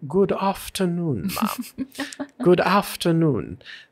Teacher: you end up with a much more rounded ooh sound